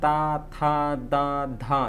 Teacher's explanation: इन सभी का उच्चारण करते समय जीभ की नोक जो है वो ऊपर के दांतों का स्पर्श करती है